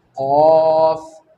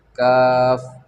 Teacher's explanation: तो काफ इसका मखरज क्या है, ज़ुबान की जड़ यानी ज़ुबान का आखिर का हिस्सा जिसको जीभ भी कहते हैं, टिप भी कहते हैं, आखिर का हिस्सा जब ऊपर के सख्त तालू से लगे तो काफ अदा होता है